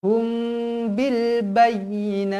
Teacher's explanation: mim kosong bertemu dengan ba Ikhfa Syafawi Ikhfa Syafawi jadi wajib dibaca dengung dua harakat